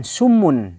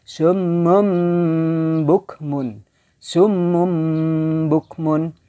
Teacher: Ya dirubah menjadi mim ada ikhfanya disertai gunah sedikit. Ya, gunah secara sempurna, maaf, dengan merapatkan bibir dan tidak direnggangkan dan tidak ditekan secara kuat. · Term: iklab